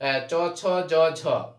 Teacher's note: চ বর্গের ধ্বনিকে তালব্য বলা হয়